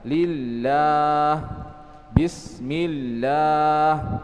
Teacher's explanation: lam yang dibaca tipis, yaitu ketika sebelum lam tersebut ada huruf yang berharokat kasrah